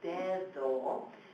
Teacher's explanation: The letter d of their language, whenever it's in the medial position between two vowels, like in the word for finger in Spanish, dedo, that d is actually your English t-h voiced sound